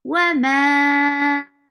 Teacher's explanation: Ma 4 counts long because this is mad munfasil.